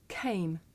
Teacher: In English, we say the voiceless sound with a puff of air. Look. Came.